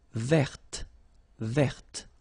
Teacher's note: I don't say te, but it's t.